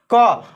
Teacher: अल्प मात्रा में मुख से बाहर वायु निकलती है और उच्चारण की स्थिति में हकार जैसी ध्वनि नहीं होती है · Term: अल्प प्राण